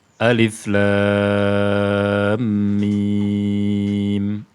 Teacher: Namun lamnya dibaca panjang 6 harakat. Ini yang dinamakan dengan mad lazim harfi mutsaqqal.